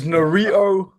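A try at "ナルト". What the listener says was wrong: It sounded like burrito.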